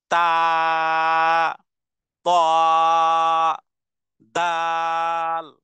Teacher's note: এই তিনটি অক্ষর এক জায়গাতে তাহলে তা অনুরূপভাবে তাল অনুরূপভাবে ত্ব জিহ্বার আগা সামনের উপরে দুই দাঁতের গোড়ার সাথে লাগিয়ে বলতে হবে